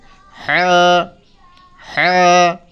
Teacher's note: গলার মাঝখান থেকে হ্যাঁ হ্যাঁ